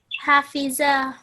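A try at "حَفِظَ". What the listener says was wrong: The zo is a fat letter. In the book and in your downloads, it's written down as a thick and heavy sound.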